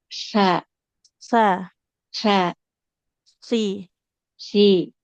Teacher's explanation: ujung lidah kita tempelkan ke ujung gigi seri yang atas